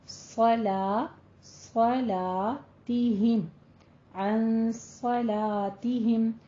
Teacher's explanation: صاد کو پر پڑھنا ہے لیکن صلا نہیں کہنا، لام کو باریک ہی رکھنا ہے اور الف مدہ ادا کرنی ہے